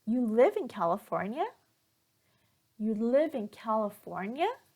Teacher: all the intonation will go up towards the end of the sentence here, which means that I am asking the other person just to check and confirm that the information that I got is correct.